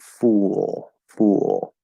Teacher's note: when you L color it, you're going from oo into the half L, and it's going to make the oo sound just a little bit different.